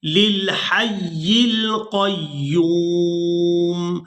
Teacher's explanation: وقف کی صورت میں میم کو ساکن کر دیں گے